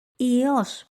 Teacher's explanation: Ypsilon iota sounds the same as the letter iota, but the pronunciation is slightly longer.